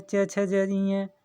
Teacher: च वर्ग जो है च छ ज ञ तालु का स्पर्श करते हैं